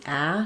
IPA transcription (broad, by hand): æ